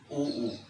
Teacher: ऊ को बोलते समय तो हमारे ओष्ठ गोलाकार बन रहे हैं।